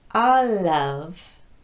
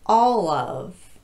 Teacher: I'm going to contrast the light L with the dark l in this phrase